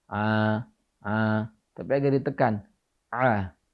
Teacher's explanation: pelafalan huruf ain yang paling fasih adalah pita suara itu agak ditekan sedikit. A, tidak dilepas.